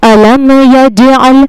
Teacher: أَلَمْ يَجْعَلْ، یہاں پر بھی میم ساکن کا اظہار ہوگا، یعنی میم کو ظاہر کر کے بغیر غنہ کے جلدی پڑھنا ہے